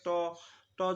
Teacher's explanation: যখন বলো আমরা এই জিভা এবং আমাদের যে উপরের দাঁতের উপরের অংশ আছে সেখানে লাগে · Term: স্পৃষ্ঠ ব্যঞ্জন